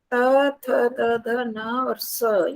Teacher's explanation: दांतों से बोले जाते हैं